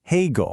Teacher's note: High first tone, then the dipping third tone.